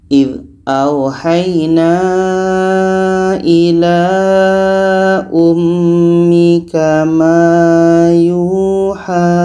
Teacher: Kita berhenti di sini, waqaf di sini, hanya menjadi panjang 2 harokat saja, panjang alif kecil. Mat jaiz munfasil ketika berhenti hanya menjadi mat tabi'i, panjang 2 harokat.